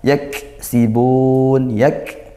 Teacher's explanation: yak sukun ditekan dan desis gitu ya